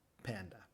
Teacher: empezamos con los labios apretados y después los abrimos rápidamente para expulsar aire pero con no usamos las cuerdas vocales practiquemos con estas palabras